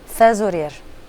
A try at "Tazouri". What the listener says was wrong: Tazouri. Tu t'arrêtes à i. Tazouri.